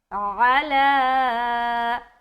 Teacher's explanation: عین کی ادائیگی نرمی کے ساتھ اور بالکل حلق سے